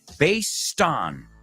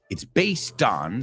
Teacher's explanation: el based acaba con T. Pero esa T se une con la preposición